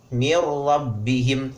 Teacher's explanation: tanwin bertemu dengan lam dan roh itu dinamakan dengan Idgham bilagunnah kita tidak diperkenankan untuk membacanya disertai dengan dengungan